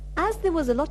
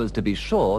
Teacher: The A in as is sometimes pronounced like the A in cat if it's at the beginning of a sentence, but usually is pronounced with a schwa